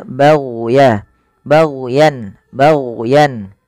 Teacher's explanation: jangan sampai memantulkan huruf gain karena huruf gain bukan huruf mantul